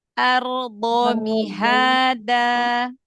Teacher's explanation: Jangan ditekan, nempel aja. Nanti kalau dia ditekan, maka yang keluar jadi huruf dal, ya.